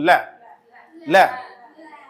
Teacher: जीभ ऊपर वाले भाग को टच कर लेगी और इसके साइड से हवा निकलेगी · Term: पार्श्विक व्यंजन